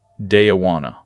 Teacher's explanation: The words are linked, blended, and reduced into a single flowing sound. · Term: connected sound